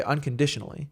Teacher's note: Like, if you say unconditionally, then you should sing it in a way that matches that cadence of unconditionally. So un and di, get the emphasis.